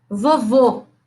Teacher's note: que que é uma vogal fechada por exemplo vamos ver vovô o segundo o é fechado